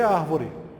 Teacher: Quando eu escrevo a palavra árvore, separando as sílabas, eu sei que a tonicidade está na antepenúltima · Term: proparoxítona